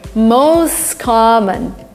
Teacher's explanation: T disappears, the words are linked together. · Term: linking and elision